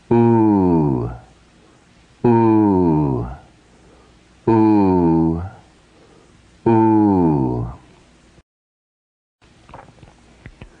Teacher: Lengthening the sound, giving it 2 matras.